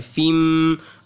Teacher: अब यहाँ पे गुन्ना होगा, फ़ा के बाद मीम है और ये तनवीन के बाद मीम है, तो इदगाम का कायदा है